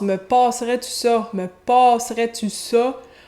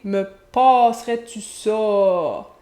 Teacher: On entend le A postérieur labialisé dont je vous ai souvent parlé, qui est réalisé à l'arrière de la bouche avec les lèvres projetées.